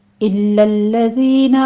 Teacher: इल्लल्लज़ीना दोनों जगहों पे लाम तशदीद वाला है, सख्ती के साथ अदा करना है